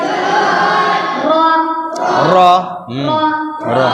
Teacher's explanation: 10 নম্বর মাখরাজ জিবের আগা উল্টা পিঠ এবং তার বরাবর উপরে কাঁচ কাটা তালুর সাথে লাগিয়ে উচ্চারিত হয়